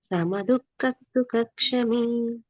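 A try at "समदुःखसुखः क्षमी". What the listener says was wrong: దుఃఖ తర్వాత విసర్గ లేదు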